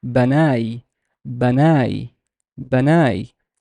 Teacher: There's a fatha on the ba, and there is nothing on the noon, but there's an alif, so it's a long ah sound.